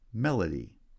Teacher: melody has stress on the first syllable